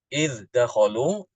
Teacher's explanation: Imam Hafiz mengidharkan huruf dal, idh dakhalu, dalnya dibaca dengan jelas. Sedangkan Imam Ibnu Amir mengidghamkan huruf dal ini ke dalam huruf dal.